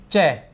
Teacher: तालव्य स्पर्शी स्पर्श संघर्षी अघोष अल्पप्राण व्यंजन है